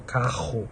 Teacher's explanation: Esse r é uma vibração. É uma vibração lá no véu palatino, lá atrás.